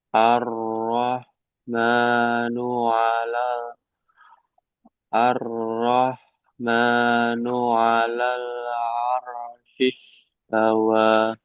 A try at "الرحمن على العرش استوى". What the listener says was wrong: Sinnya masih belum.